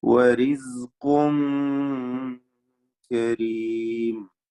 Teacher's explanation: വരിസ്ഖുൻ റാഇ തർക്കീഖ് ചെയ്യണം. ഖാഫിന് തഫ്ഖീമാണ്. ഖാഫിന്റെ തൻവീനിനെ ഇഖ്ഫാ ഹഖീഖി നൽകി അത് വ്യക്തമാക്കി മണിച്ചുകൊണ്ട് ഉച്ചരിക്കേണ്ടതാണ്.